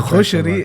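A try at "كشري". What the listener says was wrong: With a K. Kushari.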